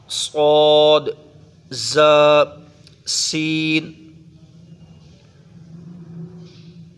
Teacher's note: 3 حروف ایسے ہیں جن کی آواز میں سیٹی پیدا ہوتی ہے